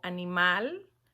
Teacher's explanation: animal la sílaba tónica está en mal